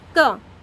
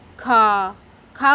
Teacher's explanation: खा में ज़्यादा ध्वनि लग रही है, मतलब इसमें हमारी प्राणवायु अधिक निकल रही है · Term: महाप्राण